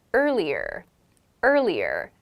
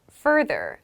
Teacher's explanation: in american english we pronounce the r sounds very distinctly